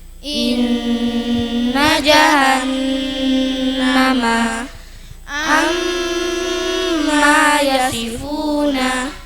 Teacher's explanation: nun atau mim bertasdid dengung tiga harakat